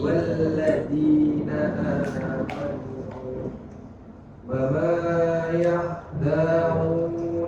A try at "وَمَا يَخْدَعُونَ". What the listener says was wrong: da'u danya pendek Baik, perhatikan ada koreksi di panjang pendeknya Pak. Jadi bacaan panjang itu hanya dipengaruhi oleh 3 sebab ya, sudah kita ketahui. Apa saja sebabnya? Alif, waw sukun dan ya sukun.